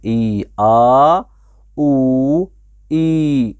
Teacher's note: ये तीनों हुरूफ मद्दा जोफ़े दहान यानी मुंह के खाली हिस्से से अदा होते हैं